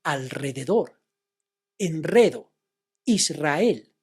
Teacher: In these words, the single R is after the consonants L, N, S, and then you must do the sound of the rolling R.